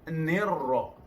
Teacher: Nirra, jika dipangkatkan ar-ra alif lam syamsiyah juga atau idgham syamsi bila gunah. Nirra, ra bertasdid pakai dua kali, bunyi jelas dua kali, satu nir, satu ra.